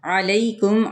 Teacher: عین کو درمیان والے حلق سے ادا کرنا ہے، یعنی حلق کے درمیانی حصے سے